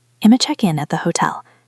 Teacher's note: Notice that hotel has the stress on the second syllable, tell. That is the big drum beat at the end.